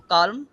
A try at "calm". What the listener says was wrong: না, এলটা উচ্চারণ হবে না, কাম। এলটা কাম। মানে আছে ওখানে, কিন্তু ওটার টানটা থাকবে, এলটা উচ্চারণ করা যাবে না।